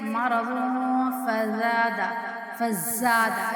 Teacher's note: فی قلوبہم مرض، اب اگر ہم ملا کے پڑھیں گے تو یہاں پہ جو ہے نا وہ اخفا کی صورت میں غنہ ہوگا کیونکہ تنوین کے بعد جو ہے نا وہ فا آ رہا ہے